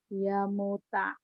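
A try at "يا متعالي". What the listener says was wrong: Ya-nya panjang. Ya muta'ali. Cuman dikit ya. Tapi kalau kurang salah gitu. Harus pas.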